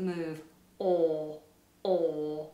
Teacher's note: In British English, this is a huge space inside the mouth, the lips are rounded, and the vowel doesn't move. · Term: or vowel